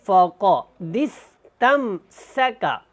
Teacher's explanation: اب ہم نے اس دال کو اس سین کے ساتھ ملانا ہے، یہ الف نہیں پڑھنا، اور یہاں پہ قاف کو موٹا پڑھیں